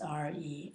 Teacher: pronounced re and in the second tone